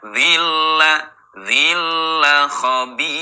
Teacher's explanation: Bila guna dengan tidak dengung. Jadi idgham bila guna masuk dengan tidak dengung